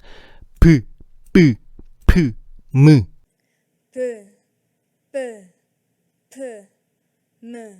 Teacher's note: 이 네 가지 소리는 윗입술과 아랫입술이 붙었다가 떨어지면서 만들어지는 소리야. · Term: 입술 소리